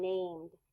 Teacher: the Ed is voiced because the m m is a voice sound